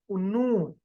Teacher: جبکہ نون ادا کرتے وقت دواحق سے پہلے جو دانت ہمارے پاس آتے ہیں انیاب, جیسا کہ یہاں لکھا گیا ہے वहां तक अदा होता है। तो वहां तक जब हम अपनी जबान की नोक या जबान की कर्व को, इब्तिदाई कर्व को जब ऊपर उठाते हैं तो नून अदा होता है